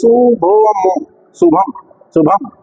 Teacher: हाँ देखिए, शुभम, शुभम, शुभम, ये नासिका से उच्चारित होता है अनुस्वार · भा पे मुंह बंद हो जाता है, शुभम। बाकी माँ का उच्चारण जो नाक से, शुभम, भा हुआ तो बंद हो गया, शुभम।